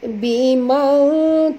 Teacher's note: kita kena sorokkan bunyi nun ini ke dalam huruf dad pada kadar separuh disertai dengung dua harakat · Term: ikhfa hakiki